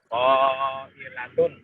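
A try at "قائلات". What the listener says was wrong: Kurang panjang.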